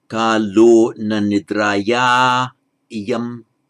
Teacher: we have the long a with visarga followed by a vowel, so it means the visarga drops out